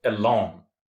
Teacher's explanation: there are two syllables in that, and the first one is unstressed and the second one should be stressed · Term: iambic